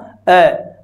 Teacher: अ बोल के देखिए आप सीधे ही जीव बिना हिले मध्य से उच्चारित हो जाती है स्वर जो होता है वो मध्य से उच्चारित हो जाता है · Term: मध्य स्वर